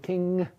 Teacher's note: you're making a closure at the velum, but you're also lowering the velum and letting the air flow through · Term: velar nasal